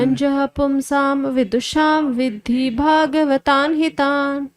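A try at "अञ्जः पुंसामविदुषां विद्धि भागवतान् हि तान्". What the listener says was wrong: देखिए, पुंसाम बोल रहे हो आप तो भी आप बोलना पड़ेगा, नहीं तो म बोलिएगा। अंजः पुंसाम विदुषाम विद्धि भागवतान हितान।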